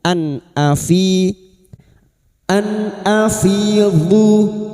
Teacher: Maka bunyi nun sukun ataupun tanwin dibaca jelas tanpa mendengung. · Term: idhar halqi, idhar halki